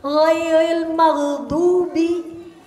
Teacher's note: Maghdubi ghain aja nggak pakai qalqalah.